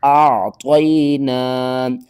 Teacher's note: یا ساکن سے پہلے زبر ہے تو اس کو ہم جلدی کے ساتھ پڑھیں گے، حروف لین ہے، اور عین کو آپ نے حلق کے درمیان والے حصے سے ادا کرنا ہے، عین کا جو مخرج ہے وہ آپ نے پورا ادا کرنا ہے۔